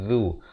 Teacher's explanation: zal berbaris dhammah di hujung lidah zu. A'udzu billah.